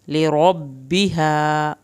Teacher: रॉ को पुर करके पढ़ना है, बाकी शद अदा होगी।